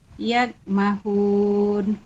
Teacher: mad arid li sukun dibaca panjang 2, 4 atau 6 harakat